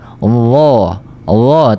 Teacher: Hujung lidah sentuh letak saja dekat hujung kacip atas. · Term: huruf D